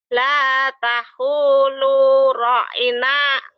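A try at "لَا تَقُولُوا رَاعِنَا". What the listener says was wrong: Ro-nya panjang. Ro. Bukan ta'u, takulu. La takulu. La takulu. La takulu. Taku. Taku. La taku. Ku. La takulu.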